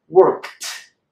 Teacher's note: You might find that when you say worked, actually the K and the D don't connect so well in the mouth. Worked. It's a little difficult. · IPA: /t/